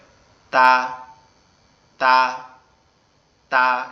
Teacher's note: তা অক্ষরটা আমাদের জিহ্বার আগা উপরের দাঁতের গোড়ায় গিয়ে লাগবে, লেগে উচ্চারিত হবে তা, তা, তা